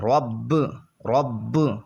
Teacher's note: یہاں پر قلقلہ خوب جماؤں کے ساتھ ادا کریں گے کیونکہ مشدد ہے، اور جب حروف قلقلہ مشدد ہوں تو خوب جماؤں کے ساتھ ادا کرتے ہیں۔